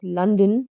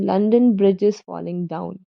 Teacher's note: A stress followed by an unstressed syllable, as in the word London, or the line from the nursery rhyme, London Bridge is falling down. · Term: Trochaic